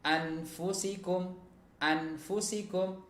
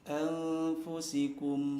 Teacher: dibaca dengan mendengung ya, karena ini termasuk hukum apa? Hukum ikhfa ya, ada nun sukun ketemu dengan fa. Anfusikum tidak dibaca dengan izhar.